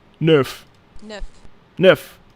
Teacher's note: EU is pronounced with a slightly more open mouth.